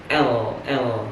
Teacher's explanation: artikulator aktif menghambat aliran udara pada bagian tengah mulut sehingga suara yang ditimbulkan melalui samping. Jadi suaranya keluar dari samping. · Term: lateral